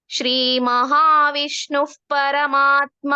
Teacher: ವಿಸರ್ಗದ ನಂತರದ ಅಕ್ಷರ ಪಾ ಇರೋದ್ರಿಂದ ಅಲ್ಲಿ ಎಫ್ ಸೌಂಡ್ ಅಥವಾ ಅರ್ಧ ಪಾ ಹೇಳ್ಬೇಕು